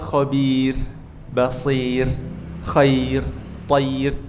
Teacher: ro sukun didahului oleh ya panjang atau ya lin seperti dikata khabir, basir khair thair itu tipis semua. Enggak boleh khabir basir.